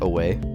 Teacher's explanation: consisting of an unstressed syllable followed by a stressed syllable